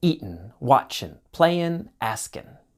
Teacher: often times in spoken English the G sound disappears